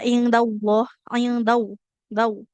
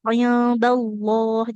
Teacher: setelah huruf dal fathah ini langsung masuk ke lam bukan in dau. Kalau daah berarti ke wau sukun jatuhnya nanti.